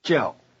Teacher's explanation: The verb in the question and answer is 叫, to be given named. It has the falling tone.